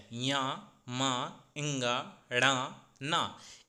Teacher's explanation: आप इनको नाक के जरिए बोलते हैं, थोड़ा सा नाक के द्वारा इनका उच्चारण होता है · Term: नासिका उच्चारण स्थान